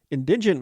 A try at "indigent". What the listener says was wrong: All about the emphasis. On the wrong syllable. indigent.